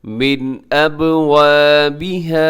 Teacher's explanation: نون ساکن ہے، نون ساکن کے بعد حمزہ، یہاں اظہار کیجیے گا